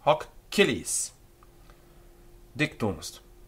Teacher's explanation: notice that hoc has a double consonant sound at the end, and it's followed by a vowel. So it's hoc cilis dictumst.